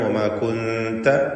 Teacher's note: ഇഖ്ഫാ ഹഖീഖി നൽകി സാക്കിനത്തായ നൂനിനെ മറച്ച് മണിച്ചുച്ചരിക്കുക